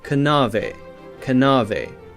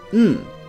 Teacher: Now we have a silent K, so we don't say kana, we say n, no. Knowledge, knave, knives, we say just n.